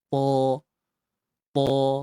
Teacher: Dua harakat dengan kita menebalkan ta dengan sebutan yang asal lah.